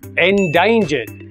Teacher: Let's try it together, and remember, we stress the second syllable.